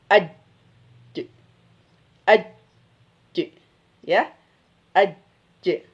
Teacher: Di tengah lidah. Ini tengah lidah ya, bertemu dengan langit-langit. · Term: jim